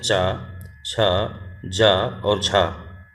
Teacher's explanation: ठीक है, निम्नलिखित में से कौन सा व्यंजन स्पर्श संघर्षी, कह रहा है स्पर्श भी है और संघर्षी भी है